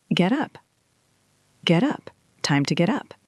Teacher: The T in get is between the E in get and the U in up, so we don't say get up, we blend it.